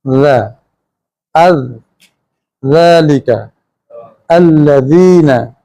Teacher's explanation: हम ज़ुबान की नोक दांतों की नोक से लगाते हैं ज़ा, और ज़ुबान नरम रहती है, सीटी या सन्नाटा पैदा नहीं करती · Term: हरफ ज़ाल